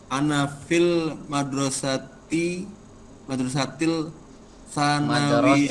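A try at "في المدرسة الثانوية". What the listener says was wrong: Madrasatis itu syamsiah ya.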